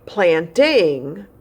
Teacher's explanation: planting is two syllables because the suffix has a vowel sound and it's making an extra syllable plant ing so you can see the red word planting there